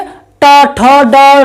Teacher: टा वर्ग, ये होती है मूर्धा, जो दांतों के पीछे से और पीछे वाली जगह होती है, उसको हम मूर्धा कहते हैं